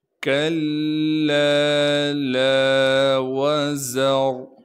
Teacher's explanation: واو کو بغیر کھینچے پڑھنا ہے، زا میں سختی ادا کر کے زا کو نکالیں گے، را پر زبر ہونے کی وجہ سے را کو موٹا کر کے پڑھیں گے